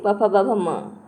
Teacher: ओष्ठ्य मतलब दोनों होठों से